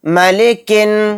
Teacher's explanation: الف اور لام نہیں پڑھے جائیں گے، نون ڈائریکٹ کاف کے ساتھ مل کر پڑھا جائے گا